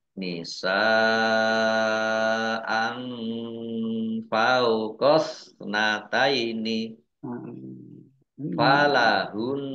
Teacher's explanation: Fathah tanwin bertemu dengan huruf fa, bacaan ikhfa, dibaca samar-samar. · Nun tasdid, ya, dibaca gunnah atau mendengung, ditahan 2 harokat.